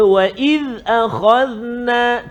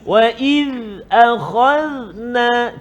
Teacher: Hati-hati dzal hujung lidah keluar sikit. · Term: huruf dzal